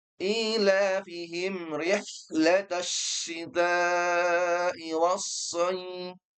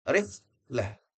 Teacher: Pertama huruf h yang dia tipis dan bersih.